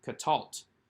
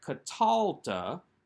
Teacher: the accent remains on the last syllable